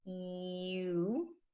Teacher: when I say the long U sound, you can watch my mouth slide from wide to round.